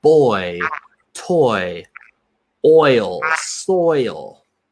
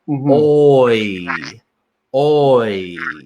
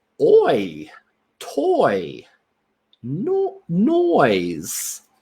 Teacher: So you're starting with that rounded lip and then you're moving into a smile. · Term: oi sound